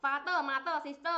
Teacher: ข้างหลังมีสระเอิกนะคะเนี่ย▁father▁mother▁sister▁เนี่ยมันคือเอิกนะคะ